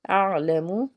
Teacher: اعلم، آئین جو ہے حروف ہلکی کا حرف ہے، حلق کے درمیان سے اس کو ادا کرنا ہے